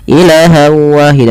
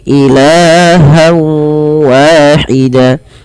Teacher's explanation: Pada lafal ilah di sini kita panjangkan la-nya sepanjang 2 harokat karena ia ada mad tabi'i. Fathah bertemu dengan alif, jangan dipendekkan ya teman-teman.